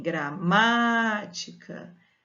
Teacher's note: em gramática a sílaba tônica é a antepenúltima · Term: proparoxítona